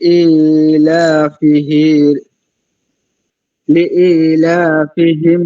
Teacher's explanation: লি ইতেও এক আলিফ, লাতেও এক আলিফ